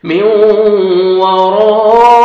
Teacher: حروف مدہ کے بعد اسی کلمہ میں حمزہ ہے، آپ نے 3 سے 4 سیکنڈ ایکسٹرا آپ نے کھینچنا ہے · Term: مد واجب